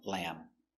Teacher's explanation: And the B is silent. No lamb. Finish with the M sound, lamb.